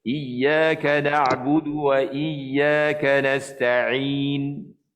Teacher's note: tuan-tuan baca 2 harakat dengan dimatikan nun. Matikan nun.